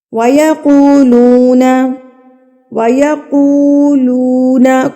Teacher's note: واو مدہ ہے یہاں پر، یعنی کہ واو سے پہلے پیش آ گئی ہے تو واو مدہ بن گیا، اس کو ہم نے کھینچ کے پڑھنا ہے۔ وَيَقُولُونَ مَتَى، تا کے اوپر کڑی زبر ہے تو اس کو بھی ایک حرکت کے برابر کھینچیں گے۔